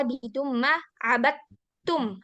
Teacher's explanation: Abadum langsung ke ta. Padahal di situ ada dal.